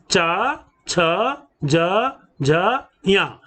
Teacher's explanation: फिर चवर्ग, चवर्ग में भी 5 ध्वनियां, च, छ, ज, झ, या। हम इसका उच्चारण तालव्य से, माने कंठ के ऊपर के हिस्से से करते हैं